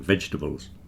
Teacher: The stress is at the beginning